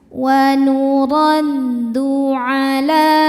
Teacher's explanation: Huruf ra dibaca secara tafkhim karena berharokat fathah. Cara bacanya ra ditebalkan.